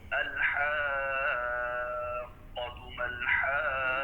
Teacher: اس کی مد سب سے زیادہ لمبی ہے. یہ بھی وہ مد لازم حرفی مثقل میں آ جاتا ہے، کلمی مثقل میں. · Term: مد لازم کلمی مثقل